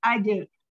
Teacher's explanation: ada huruf kol-kolah dengan sukun asli. Jadi dipantulkan kecil